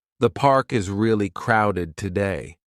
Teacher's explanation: The falling tone at the end makes it clear this is a comment, not a question.